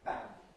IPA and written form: p⁼æn (pan)